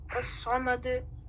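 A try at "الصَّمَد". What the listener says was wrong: Don't say all, say As-Samad. As-Samad.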